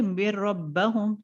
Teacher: यहाँ पे नून को ड्रॉप कर दे रहे कंप्लीटली, डायरेक्टली मीम जो है रॉ से मुलाकात कर रहा है, डायरेक्टली विथ रॉ, मिर, ठीक है। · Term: इदगाम